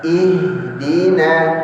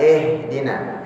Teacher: Baik, ingat yang saya sampaikan tadi di awal, kita sering lemah di huruf ha. Jadi membaca ih, bukan eh.